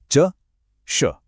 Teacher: महसूस हो रहा है कि जीभ का बीच का हिस्सा कैसे ऊपर तालू को छू रहा है। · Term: तालव्य वर्ण